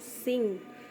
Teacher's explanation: dihasilkan dengan mendekatkan bagian belakang lidah ke langit-langit belakang atau velum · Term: velar